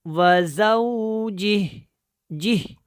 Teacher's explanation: وزوجہ جہ، ٹھیک ہے، یہ ہاں اس کے ساتھ ملے گی، تو اس کی آواز آپ نے لازمی نکالنی ہے، جی کر کے نہیں پڑھنا، جہ کر کے پڑھنا، ہاں کی بھی آواز آنی چاہیے